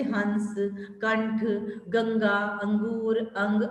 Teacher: इसका उच्चारण स्वर के बाद होता है तथा इसके उच्चारण में नाक से ध्वनि निकलती है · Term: अनुस्वार